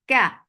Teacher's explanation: Kaf is light for fatha open jaws, and there's no humps at all in kaf when kaf is mutaharrika.